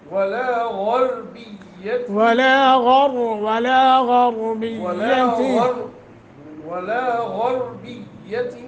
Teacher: غین اور را دونوں موٹے